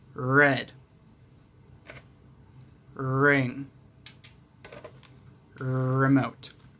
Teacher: that you need to pay attention to is your tongue because your tongue is going to go back and up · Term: r sound